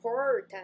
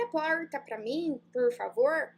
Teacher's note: Se você é do interior de São Paulo, interior do Paraná, você fala com um R puxado